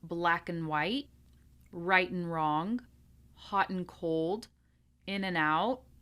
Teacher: we're going to work on reducing the and down to an N sound